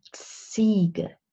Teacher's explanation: that's a combination of the t sound and the s sound